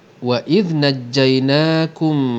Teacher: mim mati bertemu dengan mim hukumnya idgham mislain sorrir kita dengungkan dengan dengung dua harokat